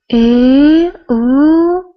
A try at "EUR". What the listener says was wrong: Okay, right there on R. When I see the letter R after a vowel, I automatically shape my throat in a circle. because I know that the sound has to be round. So instead of going up, R, R, I need to be rounder.